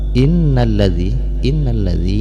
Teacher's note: yang perlu diingat adalah ini harus Rizal bukan harus Za ya jadi Zal ini makhrojnya ada pada ujung lidah bertemu dengan ujung gigi seri atas dan dia tidak mempunyai sifat Soviet jadi dia tidak berisi berdesis